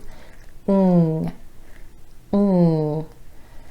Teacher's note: placement of your tongue and the airflow to make this sound the back of the tongue is actually raising up towards the soft palate or the roof of the mouth the front of the tongue is down behind the top front teeth